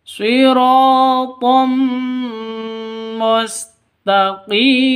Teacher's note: Taqi panjang dua ketukan karena ada ya mati diawali dengan kasroh, mad asli atau matobi'i. · Shiratam, tanwin bertemu dengan mim, cara bacanya masuk ke mim disertai dengung karena idgham bigunnah.